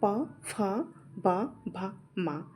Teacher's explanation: ये ओष्ठ इनका उच्चारण स्थान ओष्ठ ओष्ठ है।